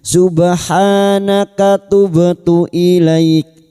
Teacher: huruf ba sukun yang mati asli di tengah kalimat qalqalah sugra jangan lupa dipantulkan. Subhanaka ha alif kecil di atas 2 harokat mad tabi'i.